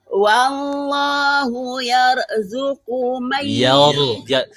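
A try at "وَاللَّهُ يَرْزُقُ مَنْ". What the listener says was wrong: bukan yar, tebalkan. Ya, apa-apa, pelan-pelan. Untuk ini bacanya sudah mulai rapi ya, alhamdulillah sudah sangat mulai rapi. Panjang pendeknya bagus, dengungnya juga bagus. Tapi ada beberapa yang kurang lama dengungnya, lamain aja. Pokoknya kata kuncinya dengung apapun itu, entah dengung ikhfa, dengung idgham bi gunnah, dengung iqlab, pokoknya main dengung sering-sering tahan aja suaranya yang lama biar terbiasa berdengung. Yang kedua, untuk makhrajul hurufnya bagus.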